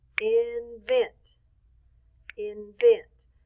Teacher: we say vent a little louder longer and higher